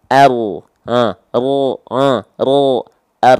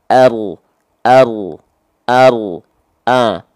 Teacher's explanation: ujung lidah saya dia nggak nempel tapi bagian punggung lidahnya yang nempel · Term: huruf ro